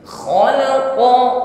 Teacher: qf di sini sifatnya syidah ya tidak tercampur dengan hemes maka dikuatkan tekanan hurufnya khalaqo Jangan diucapkan dengan lemak khalaqo ya Q sedangkan setelahnya ada